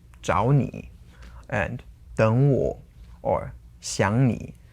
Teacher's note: So all those are two third tones together, and you have to change them according to what you've learned to the second tone and then the third tone